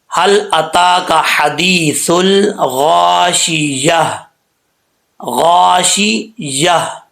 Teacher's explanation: جب وقف کریں گے لاسٹ پہ ہا کی آواز آنا لازمی ہے۔ اگر ہا کی آواز نہیں آئے گی تو سمجھ لیں کہ آپ غلط پڑھ رہے ہیں، صحیح نہیں پڑھ رہے۔